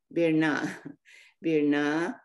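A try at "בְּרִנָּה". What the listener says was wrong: no is the dot under the vet no it's under the resh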